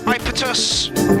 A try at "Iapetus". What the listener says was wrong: Iapetus, by the way. It's pronounced Iapetus. Put an emphasis on the E at the start.